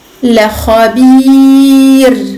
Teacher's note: Attention, ra sakina, parce que je m'arrête, je marque l'arrêt, précédé d'une kasra. La khabir, je ne fais remonter que le bout de ma langue, afin de permettre au ra d'être aminci. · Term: ra muraqqaqa